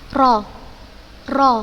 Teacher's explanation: bergetarnya ujung lidah ketika pengucapan huruf nya dengan getaran yang halus disebabkan sempitnya makhroj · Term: taqreer